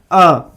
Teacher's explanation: जीभ के मध्य का भाग काम करता है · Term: मध्य स्वर